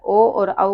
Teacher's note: कंठ प्लस ओष्ठ दोनों का यूज होता है उसमें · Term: कंठोष्ठ